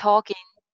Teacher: G jo hai wo itna clearly nahi bola jayega.